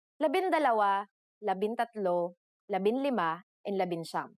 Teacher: For the letters D, L, R, S, and T, the G from NG is dropped to make it easier to pronounce.